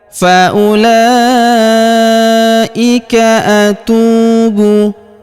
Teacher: huruf tu kita panjangkan dua harokat karena waw sukun di depannya · huruf u langsung sambung masuk lompat ke huruf lam yang panjang bacaannya 4 atau 5 harokat. Wawnya tidak dibaca ya, karena huruf u langsung lompat ke sini.